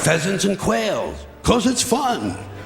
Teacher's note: Here we are a syllable less, only 7, and he slightly underemphasizes fun. 2 little cues that there's more to come.